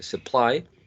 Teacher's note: Supply, same thing, supply. Initial syllable is unstressed, so there's a high probability of finding a schwa or a short e.